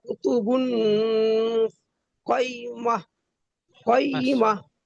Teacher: গোল তাকে হা সাকিন করে আগের অক্ষর সঙ্গে মিলিয়ে পড়তে হবে